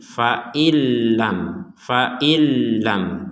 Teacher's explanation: Jadi 100% kata in di sini atau sukun di sini dimasukkan ke lam sehingga menjadi fa'ilam. Fa'ilam. Seakan-akan nunnya hilang, kemudian diperkuat dengan adanya tasdid, seakan-akan langsung fa hamzah langsung ke lam, nggak ada nun sukunnya seakan-akan.